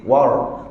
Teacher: sebut war war ni ra biasa cara nak buat ra tebal pada saat kita sebut War tadi kan lidah kita ke belakang sedikit